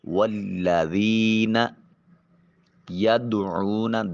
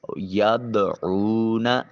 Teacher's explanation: دال ساکن ہے، قلقلہ واجب ہوگا، آواز اپنے مخرج پر لگ کر ٹکرا کر واپس آئے